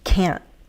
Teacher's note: we use a glottal stop in American English